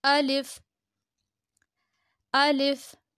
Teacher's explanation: اسے جلدی سے پڑھنا ہے، ٹھیک ہے، الیف نہیں پڑھنا، اسے پڑھنا ہے الف